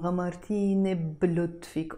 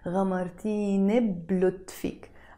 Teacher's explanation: And you don't need to say غمرتيني بلطفك. We always make the liaison غمرتيني بلطفك. Almost like the B is part of غمرتيني.